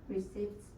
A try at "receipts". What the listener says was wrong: Receipts. No, there's no P. Receipts. Receipts. No P, okay? It's a silent P.